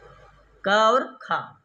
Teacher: क का भी उच्चारण स्थान कंठ ख का भी उच्चारण स्थान कंठ उच्चारण स्थान दोनों का तुल्य है समान है और अभ्यंतर प्रयत्न में भी दोनों का पष् प्रयत्न है इसका मतलब दोनों का समान हो इसका मतलब दोनों सवर्ण है दोनों को हम कहेंगे सवर्ण है समझ गए कि नहीं?